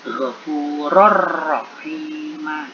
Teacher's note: Kalimat selanjutnya lagi ghafurur rahim itu mengandung bacaan idgham bila gunnah karena ada ra berharokat fathah tanwin bertemu huruf ra bertanda tasdid. Dibaca lebur tanpa dengung, bunyi tanwin hilang.